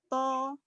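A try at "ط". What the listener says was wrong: Kurang menggema di dalam mulut, Bunda. Mulutnya gema suara.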